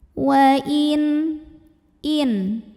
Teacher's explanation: menghadapi huruf halqi halqi Itu adalah huruf tenggorokan yaitu Hamzah maka nun sukun ini kita bunyikan dengan izhar jelas bunyi n-nya tidak perlu kita tahan